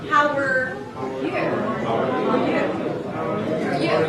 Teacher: The R was reduced to a schwa.